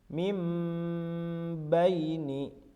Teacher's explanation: membunyikan nun sukun atau tanwin menjadi Bunyi huruf mim dengan merapatkan dua bibir serta mendengu Biasanya pada lafal hukum bacaan iqraab terdapat huruf mim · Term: iqlab